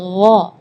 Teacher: Jadi kalau ga itu dia makhrajnya dari lidah. Ya, tapi kalau huruf ghain itu dari bagian tenggorokan ya. Jadi gha.